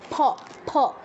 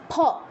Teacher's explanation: উচ্চারণটা দুটো ঠোঁট মিলে হবে